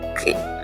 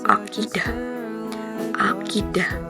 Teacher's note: Nah, cara pembulukannya itu belakang lidah menyentuh langit-langit bagian belakang terus udara ditahan sebentar lalu dilepaskan dengan tekanan